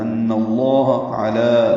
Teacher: لام اسم جلالہ کو زبر کی وجہ سے پور پڑھنا ہے. ان اللہ علی، لام کو 2 حرکات لمبا کریں گے.